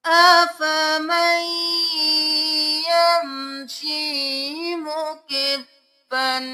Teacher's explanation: اب آیت نمبر 22 میں دیکھ لیجئے، یہاں پر افمن یمشی نہیں کریں گے، افمن یمشی کریں گے، میم کو یہاں کے ساتھ ملائیں گے گنہ کرتے ہوئے